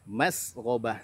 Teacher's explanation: sinnya tipis, ra-nya tebal, ba-nya tipis